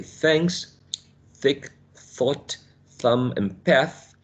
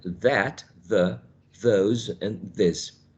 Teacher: there is only one difference between these two sounds, and it's one characteristic, which is voicing.